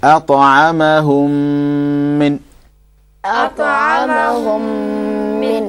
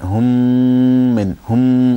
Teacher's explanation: that little sound going into the nose and stretching, that's called ghunna